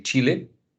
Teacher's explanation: we use an affricate sound which is also voiceless